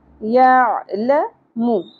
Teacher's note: عین وسط حلق سے ادا ہوگا، اور لام کے اوپر سنگل زبر ہے اور میم کے اوپر بھی ایک ہی حرکت ہے، تو دونوں حرکات کو زیادہ نہیں کھینچنا۔